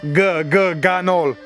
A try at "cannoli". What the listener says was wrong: C, la C.